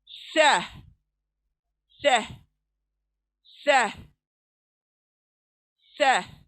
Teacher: जबान की नोक सामने के दांतों के सिरे पर लगेंगी, सिर्फ टच नहीं करेंगी, थोड़ा बाहर को आएंगी